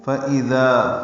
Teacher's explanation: حمزہ حلق سے بالجہر ادا کریں گے